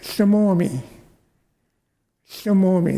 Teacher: There's that unvoiced L.